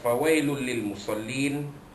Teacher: Fawailul lil musallin, lam 2 dapan lun bertemu dengan lam pada musallin, hukumnya idgham bila unah, memasukkan bunyi tanwin ke dalam huruf lam tanpa dengung, ataupun lebih, iaitu pun juga disebut idgham kamil.